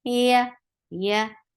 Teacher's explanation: You're lifting your tongue up towards your palate, but you are not touching it. So the sound is very, very soft.